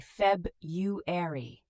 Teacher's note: February, we often say Feb-u-ary. The first R is often dropped.